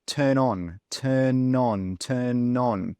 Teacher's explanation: so you can see that n and that o they come together they join together